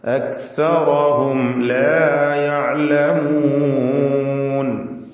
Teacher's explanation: സാകിനത്തായ മീമും ശേഷം ലാമും അക്സറഹും ഹും എന്നതിലെ മീം അതിനെ മണിക്കാതെ വെളിവാക്കണം. ഇൽഹാർ ഷഫവിയാണ്.